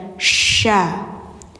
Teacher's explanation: Jadi syin ini dia memiliki sifat tafasyi ya. Jadi ada angin menyebar